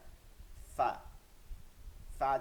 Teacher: নিচের ঠোঁটের পেট সামনের উপর দুই দাঁতের আগার সঙ্গে লাগাইয়া